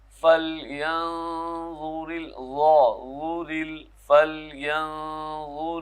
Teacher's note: نون ساکن ہے، اس پہ اخفا ہوگا، نرم آواز ہوگی. نہیں کہنا، زبان کو نرم سا رکھنا ہے.